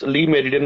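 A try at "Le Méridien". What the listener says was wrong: it's La Mariton. It's not Lee, it's La. It's a French term.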